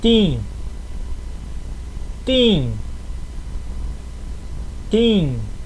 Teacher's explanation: esse T ele não tem som de ti não é TIM não é TIM não tem som de tch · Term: T duro